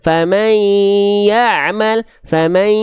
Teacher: masih ada suara yang keluar. Itu gunnah tapi tidak sempurna. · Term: idgham bi gunnah